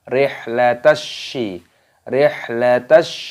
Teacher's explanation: Ila fihim rihla, hanya dibaca sukun, dibaca rihlatash. Alif lam syamsiyah, shinnya dibaca tasdid, dimasukkan, diidghamkan.